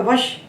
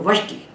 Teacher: जो वश तालव्य था वो हो गया मूर्धन्य